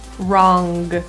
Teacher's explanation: in North American English pronunciation, this nasal sound is not fully released generally. So wrong is pronounced with the back of your tongue right up to the roof of your mouth. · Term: NG sound